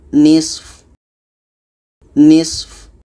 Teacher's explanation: fa ini sifatnya hamas, maka harus dapatkan sedikit fa-nya.